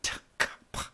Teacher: there are three non-voiced plosives, T, K, and P